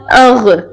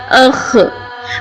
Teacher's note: یہ دونوں حروف حلق کے سب سے اوپر والے حصے سے ادا ہوتے ہیں جو منہ کے قریب ہوتا ہے. ان کو پڑھتے وقت آواز میں تھوڑی بھاری پن یا خراش ہونی چاہیے، جیسے حمزہ غین زبر اغ، حمزہ خا زبر اخ. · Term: غین خا